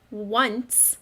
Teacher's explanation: it sounds like there might be a w at the beginning when we say once but i don't see any w in that word that's tricky